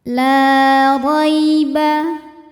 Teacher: Huruf ra dibunyikan secara tafkhim karena ra berharokat fathah.